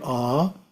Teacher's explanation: the first syllable is a pronounced as the English word a but prolonged